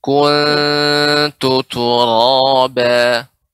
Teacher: Lebih dibuka ketika membaca kuntu. Jadi ku monyong, kemudian kembali lagi ke tempat semula.